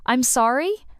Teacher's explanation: you can say, I'm sorry, with a rising intonation. It's like saying, could you repeat that?